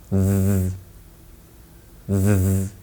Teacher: this sound is produced by placing the tip of the tongue against the top teeth and using your voice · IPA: /ð/